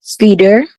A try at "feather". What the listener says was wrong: No. So the last one, the E is a short E. Feather.